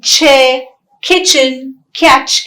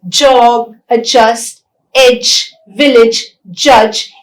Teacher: those consonants which are articulated with the structure of complete closure and gradual release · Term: affricates